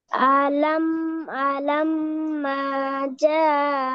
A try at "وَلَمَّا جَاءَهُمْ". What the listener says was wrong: ওয়াও বাদ যাবে কেন?